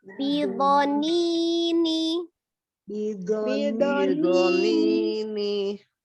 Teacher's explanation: bi pendek, lo pendek, ni baru panjang, baru ni-nya lagi pendek.